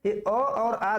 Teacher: जीभ के मध्य हिस्से से जो स्वर उच्चारित होते हैं उनको मध्य स्वर कहा जाता है। ये अ और आ 2 स्वर ऐसे हैं जो जीभ के मध्य भाग से उच्चारित होते हैं